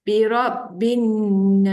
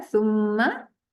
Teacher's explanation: bacaan sum tu dibaca panjang sedikit kerana dengung kat mana datangnya daripada hidung